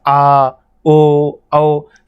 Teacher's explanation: मैंने अभी कहा था आ, ओ, औ, ये बच्चा आपके कंठोष्ठ हैं। बोल कर देखोगे तो आपकी ये आवाज़ कंठ से निकल रही है